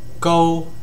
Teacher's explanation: It's a high and flat tone and it's the same thing as the first tone in Mandarin. So if you already know Mandarin um it's the same thing as the first tone.